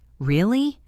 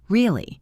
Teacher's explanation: A simple word like really can be a question, a statement, or an exclamation depending entirely on the pitch. Really, rising pitch, surprise. Really, falling pitch confirmation.